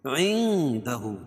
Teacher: اور یہاں اخفاء حقیقی، کیونکہ نون ساکن کے بعد حروف اخفاء کے 15 حرفوں میں سے دال ہے، تو یہاں ناک میں آواز کو چھپا کر پڑھیں گے.